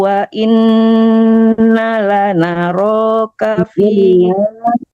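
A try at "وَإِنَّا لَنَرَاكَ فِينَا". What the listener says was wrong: Panjangkan nanya wa inna lanara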